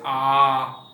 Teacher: इस स्वर का उच्चारण करते समय मुंह पूरा क्या होता है, खुल जाता है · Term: विवृत स्वर